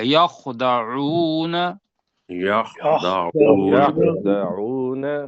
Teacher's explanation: خو کو موٹا کرنا ہے اور خا حلق سے نکالنا ہے. اور خا اور ہ ان کی جگہ ایک ہی ہے آلموسٹ، لیکن ہا پتلا ہے اور خو موٹا ہے.